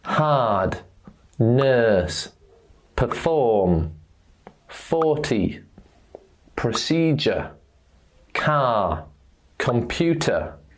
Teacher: when you have a vowel sound followed by the letter r the letter R is silent it doesn't exist